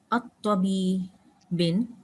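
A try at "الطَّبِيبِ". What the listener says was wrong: না, আল এবং তানউইন তো বন্ধু না, এটার এক নম্বর। আত-তাবিবি,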